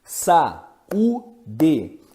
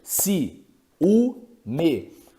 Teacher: Iato já é o encontro de duas vogais pronunciadas em sílabas diferentes. Por exemplo, sa, u, de, você percebe que do lado do a está o u, sendo que o a foi separado e aí você tem o sa de.